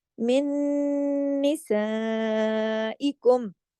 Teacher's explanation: नून साकिन के बाद जब नून मुशद्दद आ जाए तो इदगाम हो जाता है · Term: इदगाम ताम बिल गुन्ना